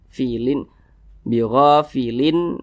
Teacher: izhar halqi maka tanwin berjumpa dengan huruf ain hukumnya izhar halqi dibaca jelas tidak berdengung jadi dibaca pendek saja fiin bofilin Amma jangan jangan bofilin jangan dipanjangkan seperti itu pendek